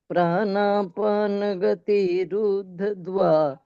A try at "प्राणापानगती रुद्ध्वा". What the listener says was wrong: ये रुद्ध द को बोलना नहीं है, रुद्ध्वा ऐसा बोलना है।